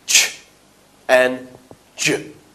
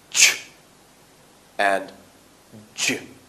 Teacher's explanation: we have a gradual release of air rather than the sudden release of air with the plosives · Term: affricates